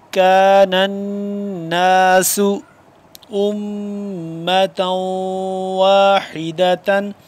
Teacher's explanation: الناس نون مشدد ہے، اس پہ ہم غنہ کریں گے، میم مشدد ہے، اس پہ بھی غنہ کریں گے، اور تا دو واو زبر تاؤں یہاں پہ بھی ہم غنہ کریں گے.